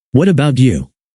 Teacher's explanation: when you ask, what about you? Use a rising intonation at the end. Your pitch should go up. It sounds friendlier and shows you're genuinely interested.